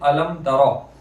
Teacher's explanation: اس کے بعد با بھی نہیں اور میم بھی نہیں بلکہ تا ہے، تو یہاں اظہار شفوی ہوگا، گنہ نہیں کریں گے